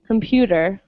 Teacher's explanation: i say it slowly i pronounce it as a t but speaking normally i would just say computer so for us it sounds more like a d